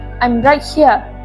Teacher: The stress is on right